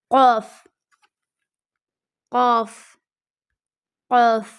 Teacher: زبان کی جڑ کا آخر جو کوے کے پاس ہے جب اوپر کے تالو سے لگے. زبان کی جڑ کا آخر جو کوے کے پاس سے ہے جب اوپر کے تالو سے لگے.